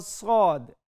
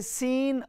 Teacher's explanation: सीन और सद सीन सद सिर्फ थोड़ा सा फर्क है के साद को हम मोटा करके पढ़ते हैं लेकिन सीटी की सी जो आवाज है वह दोनों रूफ में मौजूद है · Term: करीब उ सौत